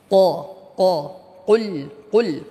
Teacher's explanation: isti'la ini mempunyai efek tafkhim sehingga dia tebal. Qa, qul dengan memanyunkan bibir kita.